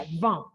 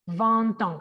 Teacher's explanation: Entonces, cuando unimos esa T a la palabra años, suena la T. Si fuera solito el 20, la T no se pronuncia